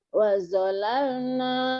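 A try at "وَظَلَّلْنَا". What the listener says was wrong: Wazallalna ada tasjid.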